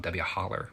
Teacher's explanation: You notice there's an R there that isn't even really there to begin with. You add extra ones.